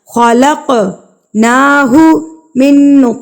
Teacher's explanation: حروف مستعلیہ میں سے قاف پر قلقلہ کر کے اس کو بھی پر پڑھا جائے گا. خلقناہ من تو بھی پر پڑھا جائے گا, ساتھ میں اس پر قلقلہ بھی کیا جائے گا.